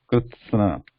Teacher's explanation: With ta and sa together, krutsa, and na is pronounced immediately after sa.